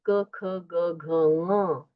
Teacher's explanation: क ख ग घ म उसका उच्चारण कंठ से होता है।